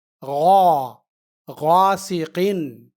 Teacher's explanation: غین زبر الف، غا، سین زیر سی، غاسی، قاف دو زیر قن، غاسقن۔ یہاں غین کے بعد الف مدہ ہے، یعنی یہاں الف غین کے زبر کی آواز کو دو گنی لمبی کرنے کے لیے ہے